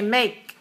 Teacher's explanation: with the K at the end make we don't say make we don't need to let a puff of air come out we just say make so it's very small that sound at